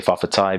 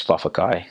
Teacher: understanding that the T's and K's are interchangeable. And it was really interesting to see that the T's are for respectful terms.